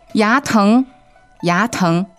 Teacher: All right, remember that's 2 second tones, 牙疼, right?